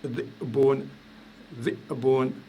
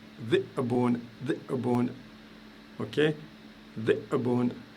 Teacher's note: Le loup, par exemple, se dit dhi'bun, dhi'bun, je fais un coup de glotte.